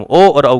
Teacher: ओ और औ का उच्चारण कंठोष्ठ से होता है।